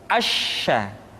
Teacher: Sya dikeluarkan dengan cara mengangkat tengah lidah kita ke langit-langit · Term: huruf sya